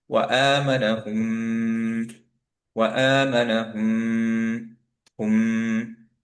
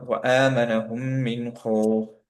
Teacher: কারণ হচ্ছে যে এই মিম আবার সিমিলার, মিম মিম গুন্না হয়ে গেল, মিম মিম ইদগাম হয়ে গেল, দ্যাটস ওয়াই আমরা এখানে গুন্না সহ করছি